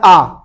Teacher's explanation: जो विवृत है, जिसमें मुख पूरा खुलता है आ बोलने में